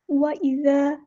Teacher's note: وَإِذَا، ذال کو ہم نے نرمی سے پڑھنا ہے، الف مدہ آ گیا تو ایک الف کے برابر لمبا بھی کریں گے، یعنی 2 کاؤنٹس لمبا کریں گے